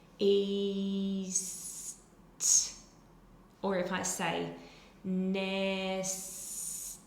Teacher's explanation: You can feel that your tongue, the sides of your tongue stay lifted, so it's just easier for the tongue to stay lifted to transition from that E sound to the S sound. And then the tongue is already up for that alveolar S, and it knows it's going to have to stay there for that T sound